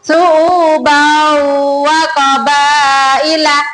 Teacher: Itu tanwin bertemu dengan huruf wow, ya anak-anak dibaca mendengung